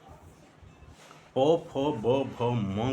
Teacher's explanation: आपके ओष्ठ, दोनों ओष्ठ आपस में टकराते हैं और उनके टकराने से ये ध्वनियाँ उत्पन्न होती हैं